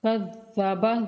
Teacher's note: ذا کو سختی کے ساتھ اور بغیر کھینچے پڑھیں گے ذال کو